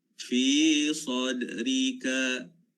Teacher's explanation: Sad dal bertanda mati, qalqalah kan, sadrika.